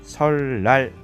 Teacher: 앞에 있는 것에 의해서 뒤에 있는 것이 리을로 교체가 되었습니다. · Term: 순행적 유음화